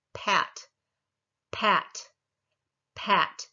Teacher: You feel the vocal cords vibrating when the vowel starts, not when you're doing the p. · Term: voiceless